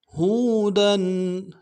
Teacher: کان، من کان ہودن، ہاں کو واو کے ساتھ ملانا ہے، واو مدہ ایک الف دال میں کھینچیں گے، دال کے اوپر تنوین ہے، غنہ کریں گے